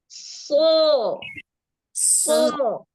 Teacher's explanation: Jadi harus ada desisnya itu namanya shofir suara tambahan